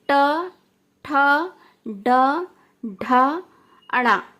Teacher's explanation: तो ये मूर्धा से ये जो उच्चारण किए जाते हैं, ये टा वर्ग से उच्चारण किए जाते हैं। टा वर्ग मूर्धा से उच्चारण किया जाता है।